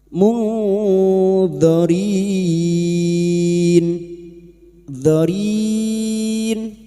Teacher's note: Nun sukun bertemu d. Nun sukun dibaca samar dan mendengung selama tiga harakat. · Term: Ikfa hakiki